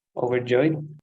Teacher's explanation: it's three syllables with the stress at the end